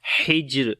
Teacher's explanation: ہا کو گلے کے درمیان والے حصے سے پڑھیں گے اور جیم کے اوپر قلقلہ کریں گے، اور جب رکیں گے یہاں پر را پر تو دو زیر ختم ہو جائیں گی اور جزم آ جائے گی را کے اوپر.